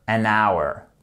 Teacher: le H n'est pas prononcé du coup qu'est-ce qui se passe on commence par un son voyelle et donc pour dire une heure on ne dira jamais a